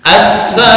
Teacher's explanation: sa panjang i pendek hanya satu harokat doang